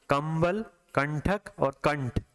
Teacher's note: तो नासिका का उपयोग हो रहा है क्योंकि आपका जो वाइब्रेशन है वो नासिका में हो रहा है